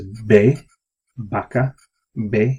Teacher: actually the V and the B sound the same in Spanish